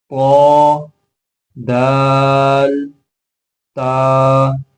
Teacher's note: مخرج نمبر 12، زبان کی نوک جب اوپر سامنے کی 2 دانتوں کی جڑ سے لگے اس سے 3 حروف ادا ہوں گے